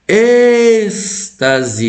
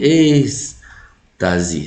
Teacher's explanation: Você percebe que o E, ó, você dá uma esticada nele